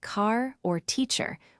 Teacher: drop the R sound in words like car or teacher when it's not followed by a vowel